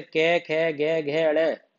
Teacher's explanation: का वर्ग के जितने भी हैं, जैसे कै खे गे घे अड़े, ये कंठ, कंठ से बोले जाएंगे।